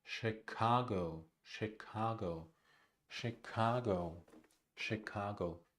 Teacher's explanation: The first syllable is unstressed, the second is stressed.